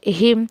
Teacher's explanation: یہاں پہ غنہ نہیں، کچھ نہیں ہوگا کیونکہ یہ جو ہے وہ میم ساکن کا اظہار ہے